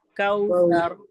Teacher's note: काफ भी बारीक पढ़ा जाता है, सा भी बारीक पढ़ा जाता है, और रॉ को हम मोटा करेंगे